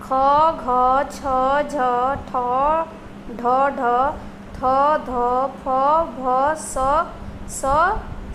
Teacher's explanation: फेफड़ों से बाहर निकलते वाली वायु की मात्रा अपेक्षाकृत अधिक होती है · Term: महाप्राण